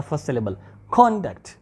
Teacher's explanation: a bit louder we have to put some extra force on the first syllable